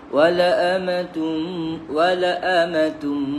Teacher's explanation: Huruf Hamzah yang berada di tengah-tengah huruf Lam Alif ni baru baca dua harakat